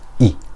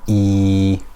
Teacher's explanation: a kasra is followed by a ya, that is also mad, it is stretched for 2 haraka. So we know hamza kasra I, it's stretched for 1 haraka, hamza kasra I.